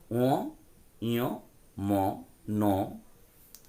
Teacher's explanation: এটাকে বলা হয় নাসিক্য, নাসিক্য ধ্বনি। কারণ এগুলো উচ্চারণের সময় একটু নাকে নাকে উচ্চারিত হয়।